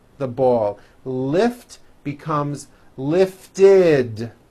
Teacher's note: if a word ends in a t or a D sound we add the ending ID which is a vowel I followed by a d which is voiced